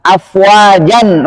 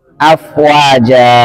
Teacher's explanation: Ketika waqaf dengan alif yang dipanjangkan dua harokat. Contohnya afwajan menjadi afwaja.